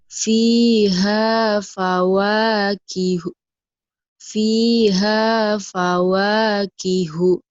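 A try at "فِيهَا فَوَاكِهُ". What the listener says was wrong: Itu pintar, ayo terusin pintarnya.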